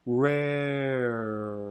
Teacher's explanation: So it does shift the R sounds, and it'll even oftentimes happen for the post-vowel R. Rare, that little bit of lip rounding that's more common for Americans and maybe not as common in some other accents.